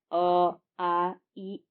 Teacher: वे स्वर जिनके उच्चारण में हमारे होठ वृत्त के समान गोल ना होकर फैले हुए रहते हैं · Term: अ वृताकार स्वर